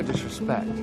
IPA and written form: ˌdɪs.rɪˈspekt (disrespect)